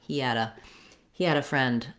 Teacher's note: using a flap sound when you're linking from a t or a d to a vowel sound